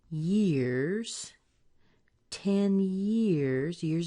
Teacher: years is a little bit stronger than ten